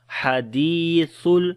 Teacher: Ha we read from the middle of the throat. Dal we long due to ya madda.